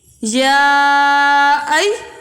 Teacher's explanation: یہاں پر مد منفصل ہے، اس کو 2.5 الف کی مقدار کھینچ کر ادا کریں گے